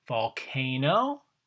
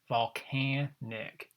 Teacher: volcano there's your long vowel sound there volcanic changing the a to the short vowel